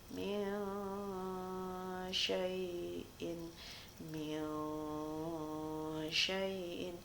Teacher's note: Contoh, min syai'in, min syai'in. Jadi di saat pelafalannya itu ada dengung yang samar-samar. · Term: ikhfa